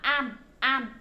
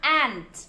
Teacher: Cái âm t là không bị nuốt